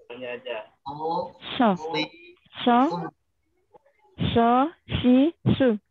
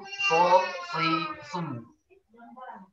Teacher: Dari dulu kelemahannya di situ belum bisa, benar shadnya. Jadi jangan kena tengah lidah. Ujung lidahnya aja. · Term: huruf shadnya